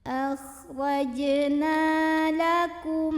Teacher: Mad tabi'i karena ada alif sebelumnya fathah, maka huruf nunnya dipanjangkan 2 harokat.